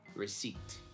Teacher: We don't say that P. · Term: silent P